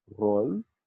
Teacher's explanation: We have the retroflex r, roll.